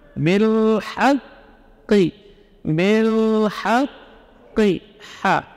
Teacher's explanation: Ha dari tengah tenggorokan